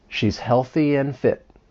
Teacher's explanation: let's practice reducing and to n